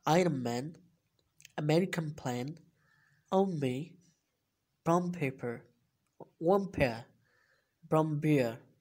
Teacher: n sound comes before m, b or p sound, it would changes into m sound